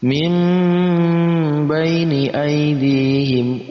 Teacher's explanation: Nun mati bertemu dengan ba, dibaca iqlab. Ketika ada nun mati bertemu dengan ba, maka nun mati kita ganti dengan huruf mim. Kita lihat di situ ada tanda mim untuk mengganti nun mati.